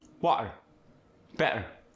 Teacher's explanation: if the T is in the middle of the word, you get that glottal stop, like you do in the Scottish accent